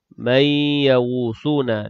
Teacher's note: nun mati bertemu dengan ya idgham ma'al ghunnah dengung sekadar dua harakat